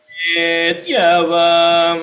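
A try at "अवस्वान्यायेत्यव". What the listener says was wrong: See, you are saying yetyava. When you say yetyava, what did you do? You did not hold the ta. I'm holding the ta. I'm not releasing it immediately. Avasvanyayetyava. There is almost like a pause where I'm holding the the ta before I release it. Avasvanyayetyava.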